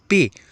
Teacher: اب یہاں دیکھیں تو یہ جب ہمارے منہ سے پے کی آواز نکلتی ہے تو یہ پی کی آواز ہمارے دو ہونٹ جو ہوتے ہیں ہمارے، یہ اس پی کی آواز کو ادا کرنے میں دونوں جڑ جاتے ہیں